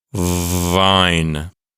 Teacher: not vibrating so for example the letter v as in Vine the letter V is a voiced consonant as I say the letter V my vocal cords are vibrating